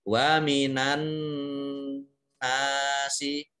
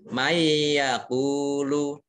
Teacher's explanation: nun sukun bertemu dengan huruf ya, itu idgham bi gunnah mendengung, masuk dengan mendengung